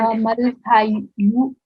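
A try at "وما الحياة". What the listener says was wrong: This is not a dhamma. We've got a fatha here, fatha ashbaya. So it will be wa mal haya.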